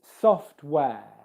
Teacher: the air diphthong, where you start in the e position and end in the schwa position.